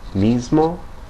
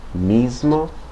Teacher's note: before certain consonants such as m and d the S can have more of a z like sound